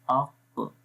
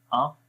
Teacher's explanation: یہاں پر قلقلہ ہوتا ہے، آواز کو باؤنسنگ کی جو آواز ہوتی ہے ویسے کریں گے